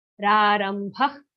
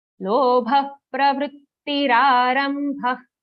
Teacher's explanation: Kha-like sound in the visarga. Lighter version of kha.